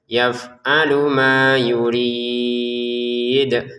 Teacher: Untuk yuridnya kita baca enam harakat. Di ujungnya ada pantulannya dal ya.